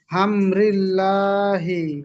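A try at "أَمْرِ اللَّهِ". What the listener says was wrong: হাম হবে না, আম। আম।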